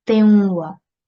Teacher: we need to apply assimilation here with prolonged nasal sound for 2 seconds or 2 counts.